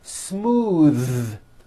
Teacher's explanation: believe it or not the th sound in smooth is voiced